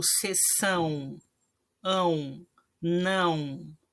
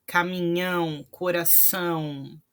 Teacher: quando eu tiver o tio em cima das vogais, né? A ou O, essas vogais vão ter um som nasal.